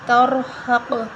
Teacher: را اور قاف دونوں کو ہم موٹا پڑھیں گے اور ہا کو بھی ہم موٹا پڑھیں گے